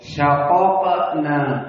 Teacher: Syaqaqna, maka qaf pertama fathah, qaf kedua apa? Sukun menjadi qalqalah as-sughra.